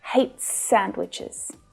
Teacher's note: the s at the end of hates pulls together with the s from sandwiches.